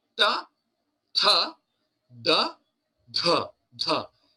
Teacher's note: So these five rows, every second and fourth will have an aspirated sound. Then the dharma, the dha, is an aspirated sound.